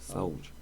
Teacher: Não, tem o hiato, porque ambas possuem força no som e obrigatoriamente serão separadas.